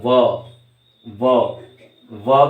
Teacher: व कहने में दांत और होठ मिल रहे हैं